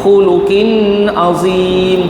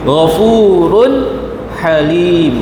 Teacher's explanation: jelas kat sini semuanya tidak boleh didengungkan nyata eh jangan kita dengung sikit pun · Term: izhar halq